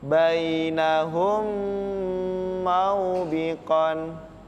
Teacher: mim sukun di depannya atau bertemu dengan huruf mim atau ba Maka nanti membacanya didengungkan selama satu setengah Alif atau tiga harakat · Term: idgham mimi